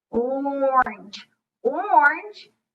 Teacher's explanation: you can hear the O, but it mostly is an R-controlled vowel. The R, orange, is being dominant over that vowel.